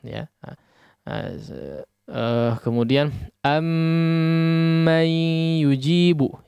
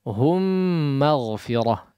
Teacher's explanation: Ya, pada hukum idgham mithlaini as-shaghir di sini, ya, maka ada yang perlu diperhatikan, yaitu perlu menggunnahkan dengan gunnah yang panjang. Ya, sebagaimana kita membaca huruf mim yang bertasydid pada umumnya.